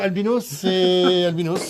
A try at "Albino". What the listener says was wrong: Sans S.